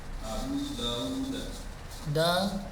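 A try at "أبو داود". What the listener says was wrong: U-nya pendek Pak.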